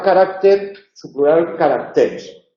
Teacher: hay una dislocación acentual, cambia la sílaba tónica en la palabra carácter, su plural caracteres. El plural de carácter no es caracteres, sino caracteres.